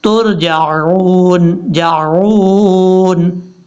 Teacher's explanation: जीम के बाद जो आइन है, आइन को हमजा की आवाज़ में नहीं पढ़ना, तुरजाऊन नहीं पढ़ना, ये गलत हो जाएगा।